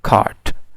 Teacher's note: when t comes at the end, like cart, it is usually unreleased. Unreleased mean it is not aspirated.